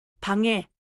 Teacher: The nasal ending flows into the next vowel. 방에. I'm trying not to kick the end of on before.